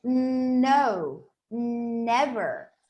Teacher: when i say the letter n my tongue touches my palate